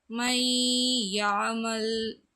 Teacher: சுக்குன் செய்யப்பட்ட நூனுக்கு அடுத்து யா வந்துச்சு. அப்போ நம்ம என்ன செஞ்சோம்? சத்து செஞ்சோம். இந்த நூனுக்கு வேல்யூ இருக்காது இந்த இடத்துல. இந்த நூன் வந்து விழுத்து ஆடிரும் என்று சொல்வார்கள், விழுந்து போயிடும்.